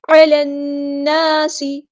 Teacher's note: لام یہاں پر لام شمسیہ ہے، اس کو ہم ظاہر نہیں کریں گے ، نون پہ غنہ زمانی ہو رہا ہے، الف کے برابر